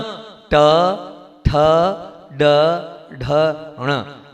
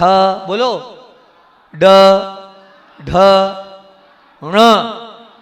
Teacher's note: हम ना नल का उपयोग करते हैं, हम जीभ को पीछे ले जाते ही नहीं है। ण बोलना है, ण जीभ को पीछे ले जाना है।